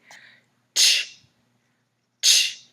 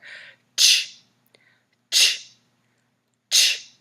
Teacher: you are going to have your tongue up right behind your front teeth, kind of like you're going to start to produce the t sound. And then you're going to round your lips and release the air with a quick burst. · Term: ch sound